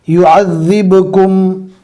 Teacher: زال کو ادا کرتے وقت زبان کا کنارہ ہلکا سا دانتوں کے باہر نکالنا ہے